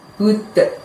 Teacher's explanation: Nah, pada saat mengucapkan tadi, mulutnya tidak dibuka lebar, dan pada saat melafadzkan budnya tadi itu kita mantulkan ya suaranya bud, seperti ada suara d dengan ringan